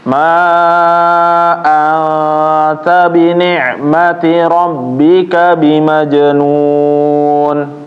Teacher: membaca angta itu ditahan Jadi bukan Man aja yang panjang tapi angta ini juga ditahan sekitar dua ketukan atau tiga ketukan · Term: dengung